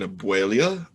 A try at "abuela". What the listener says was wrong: You just threw a couple extra vowel sounds in that word, but sure.